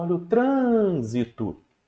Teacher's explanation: a sílaba TR ganhou mais força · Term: sílaba tônica